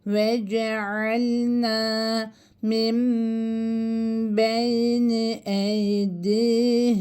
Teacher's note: cezimli olan nunu okumuyoruz. Onu cezimli bir mime dönüştürüp bir miktarda tutuyoruz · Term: iklap